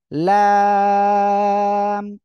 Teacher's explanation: হ্যাঁ, ওকে, খেয়াল করেন। এই যে লাম জিহ্বার আগার কিনারা উপরের মাড়ির দাঁতের গোড়ার সঙ্গে যে কোনো এক পাশে লাগিয়ে আপনারা উচ্চারণ করবেন।